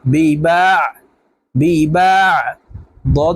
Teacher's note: আইনকে হলকের মধ্যখান থেকে চাপ দিয়ে উচ্চারণ করতে হবে